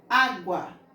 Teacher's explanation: Também na palavra água, nós iremos pronunciar a vogal U com menos força, com menos intensidade. Água. Praticamente ou quase você não escuta o som da vogal U, a não ser que eu leia água. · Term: semivogal